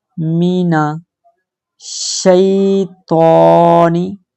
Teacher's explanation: شین پر تشدید ہے، ٹھیک ہے، تو موٹا حرف ہے، اس کو موٹی آواز میں پڑھیں گے